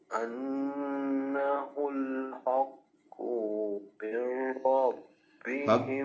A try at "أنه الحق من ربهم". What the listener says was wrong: حق काफ को लंबा नहीं करेंगे حق من ربهم